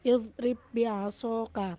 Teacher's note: Yang kedua ialah ba sukun bertemu ba, yakni wajib dibaca dengan idgham, namun pada huruf ba yang pertama tak perlu melafalkannya dengan qalqalah sebagaimana huruf dal.